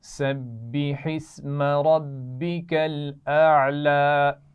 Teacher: سبی با پر شد ہے، سختی سے پڑھیں گے. ربی میں را موٹی پڑھی جائے گی.